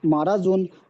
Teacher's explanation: মিমের ওপর জাবার এসে, জাবারটি হলো হারাকাত, হারাকাতের পড়া তাড়াতাড়ি পড়তে হবে, টান দেওয়া নিষেধ।